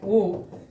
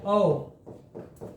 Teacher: ओ और औ जो होता है कहां से बोले जाते हैं कंठ उष्ट ध्वनियां है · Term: कंठ ओष्ठ ध्वनियां